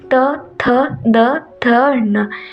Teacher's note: इसका उच्चारण स्थान है दंत यानी कि हमारे जीभ है वो दांत से टच करती है